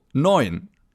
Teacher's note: The EU in the middle of the word is pronounced oi, as in oyster